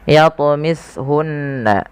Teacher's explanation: wajib kita pantulkan lafal huruf ta. Jangan dibaca yatmishun, tapi harus memantul. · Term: qalqalah